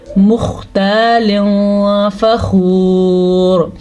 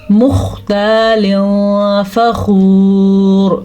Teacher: تو پھر نون ساکن یا تنوین کی آواز کو چھپا دیا جاتا ہے لیکن غنّے کے ساتھ۔ اس کو ہم پڑھیں گے مختال فخور، اتنا نہیں چھپانا کہ وہ نون کی کنڈیشن پہ ہی نہ رہے، تنوین کی کنڈیشن پہ ہی نہ رہے، ہم اس کو پڑھیں گے مختال فخور۔ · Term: اخفاء